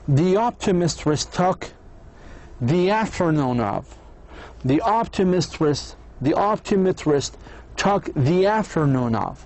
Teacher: pronouncing the final sound of the word the as a long E. A long E حكينا هو the vowel sound in the word keep، هذا معناتها long E.